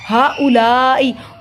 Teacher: لام پہ بڑی مد ہے، اس کو تین الف کے برابر لمبا کیا جائے گا